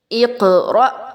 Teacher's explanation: القت، امہل، اقرأ. اب اس میں قاف پہ قلقلہ اور حمزہ کو جھٹکا دے کے پڑھا جا رہا ہے